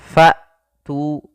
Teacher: Maka ketika melafalkan hamzah fa tu, ya, nafas tertahan dan suara pun tertahan. Kemudian pelafal tu di sini ada mad tabi'i yaitu ditandai dengan dhammah bertemu dengan huruf waw, panjangnya dua harakat.